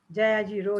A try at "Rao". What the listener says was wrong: Sorry, can you stop it? It's Rao, not Ro. The name is pronounced.